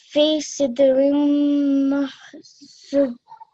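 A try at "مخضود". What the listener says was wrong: Just make it a little bit longer, makhdud. Fi sidrim makhdud.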